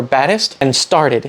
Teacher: Notice it's not an alveolar trill, r, but it's not actually a T or a D either. It's an alveolar tap, which is just a quick single articulation